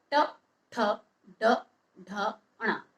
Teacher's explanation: जब आपने इन वर्णों का उच्चारण किया तो आपकी जो जीभ है वो मुंह में ही, मुख में ही पीछे घूम जाती है, वो मूर्धा की तरफ आती है। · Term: मूर्धन्य